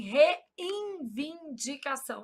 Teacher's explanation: A gente nasaliza esse N na pronúncia.